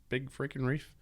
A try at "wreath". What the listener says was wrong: wreath. It's not with an F. It's a wreath. It's not a reef. A reef is like a coral reef. No, that's R E E F. A wreath. W-R-E-T-H.